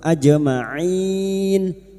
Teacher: Aj jim sukun yang mati asli di tengah kalimat qalqalah sugra ajmain. Main huruf ain jangan samakan dengan hamzah huruf ain wastul halqi yaitu tengah tenggorokan main bertemunya mad dengan huruf hidup yang dibaca wakaf mad arid lukun empat harakat kita panjangkan.